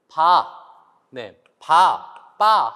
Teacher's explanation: 두 입술을 붙였다가 두 입술에서 소리가 난다고 해서 우리가 양순 음이라고 합니다